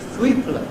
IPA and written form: θ.w.iː.p.l.ə (thweepler)